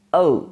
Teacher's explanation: the tongue glides from half open to half close back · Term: closing vowel